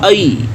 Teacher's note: یہ نرمی سے ادا ہو رہا ہے اور زبان جو ہے وہ اوپر تالو کے ساتھ نہیں مل رہی ، اس میں تھوڑا سا فرق ہے، تھوڑا زیادہ فاصلہ ہے